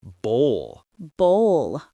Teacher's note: It rhymes with roll or goal. The vowel sound is the long O followed by a slight L sound.